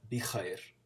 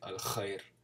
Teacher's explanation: khair, you have to do it from the back of your throat. It's similar to German a little bit.